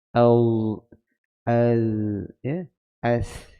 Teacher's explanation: di hujung lidah ya. Tersentuh pada gigi gusi, gigi depan ya